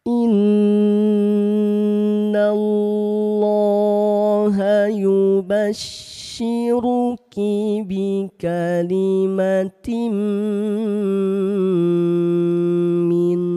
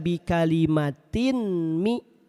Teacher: Perhatikan ini kan asalnya tin ya. Tanwinnya ditempelkan ke mim. Tanwinnya dimasukkan ke mim. dileburkan ke mim sambil ditahan dan didengungkan dua harakat. · Perhatikan tanwin jumpa huruf mim. Dibacanya tahan dulu dua harakat. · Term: idgham big gunah